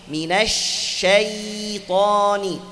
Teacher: suaranya jalan karena ada sifat rakhawah. Jangan baca minasyaita, bukan ta.